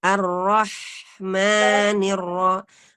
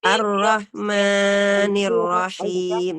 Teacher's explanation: hamsnya kita pertahankan dan kemudian bacalah huruf alif dengan tipis dan jangan memanjangkan huruf mim melebihi kadar Mad thobii jika membacanya dengan disambung misalnya arrohmanirrohim juga tidak boleh panjang ya